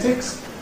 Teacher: ‘phonetics’ /fəˈnetɪks/, there the ‘-ic’ /ɪk/ suffix has the effect of throwing the stress onto the ‘net’ /net/, /fəˈnetɪks/.